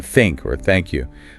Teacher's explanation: You kind of gently put the tip of your tongue just between your teeth, >> just barely.